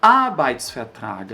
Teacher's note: A palavra Arbeit, significa trabalho, muitas pessoas colocam a sílaba tônica aqui, ó, Arbeit, mas está errado. A sílaba tônica é sempre nessa primeira sílaba, nesse primeiro A. Então, mesmo que essa palavra seja enorme assim, a gente vai colocar mais força naquele A.